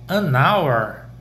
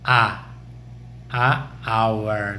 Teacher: É como se esse H fosse mudo e aí a gente coloca o N, porque logo depois vem uma vogal